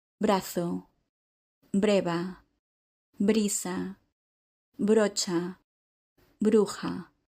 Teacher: both the b and the v consonants in the word “breva” are pronounced as a b.